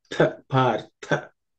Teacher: Tha is the second letter in the tha varga. So it has to be aspirated.